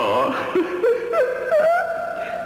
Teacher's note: That TH sound rumbles through my mouth.